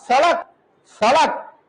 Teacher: जीभ ऊपर जाकर के थप्पड़ मार के तुरंत क्या होगी नीचे आएगी